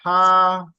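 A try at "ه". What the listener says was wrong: হা ভিতরে চলে না না, এটা মানে হা স্বাভাবিক, হা, যেমন হাওয়া, হাওয়া, সেরকম হা না, ভিতরে না। হা বললে তো ওটা ওই যে আইন হা, ওই শক্তটা বড়টা, বড় হা হয়ে যাচ্ছে, ছোট হা, সেটা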